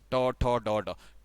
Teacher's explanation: ट का उच्चारण स्थान कहां से आना था, मूर्धा